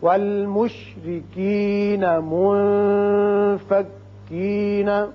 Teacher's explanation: والمشرکین میں را کے نیچے زیر ہے اس لیے اس کو باریک پڑھیں گے. منفکین نون ساکن کے بعد فا جو کہ حروف اخفا میں سے ہے، لہذا یہاں اخفا کریں گے.